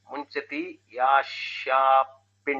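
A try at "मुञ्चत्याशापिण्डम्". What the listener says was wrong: Once you say Munchati, only A will be there. If you don't split it, Muncha. So Munchati Asha Pindam.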